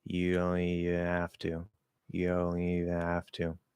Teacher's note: I'm not saying the D. I'm nasalizing the O. I'm not saying the N. I'm not saying the T. So it's U plus nasal O. · I'm going to nasalize the E before the N in even, dropping the H, keeping the A